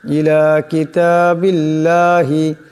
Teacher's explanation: ইউদ আউনা ইলা কিতাবিল্লাহি এখানে আল্লাহর লামের ডানে বার নিচে জের আসছে, আল্লাহর লামকে পাতলা আওয়াজে পড়তে হবে